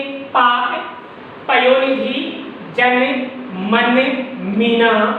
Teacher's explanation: पै फै बै भै और मै, इन वर्णों का उच्चारण हमारे होठों के मिलने से होता है। यदि हमारे होठ काम नहीं करें, यदि हमारे होठ सक्रिय नहीं हो तो अपन पै वर्ग का उच्चारण नहीं कर सकते।